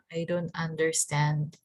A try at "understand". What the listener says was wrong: So just slow down a little bit because you said it really fast and you skipped your D. Yeah, you just said like understand. But make sure that you don't go too fast, right? Slow and smooth.